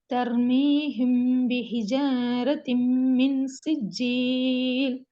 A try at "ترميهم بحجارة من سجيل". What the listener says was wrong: பிஹிஜாரத்தின் என்று நீட்டுறது பிள்ளையா? ஒரு செகண்ட் தான் நிட்டணும். ஹிஜ பிஹிஜ பிஹிஜ ஜ அவ்வளவுதான்.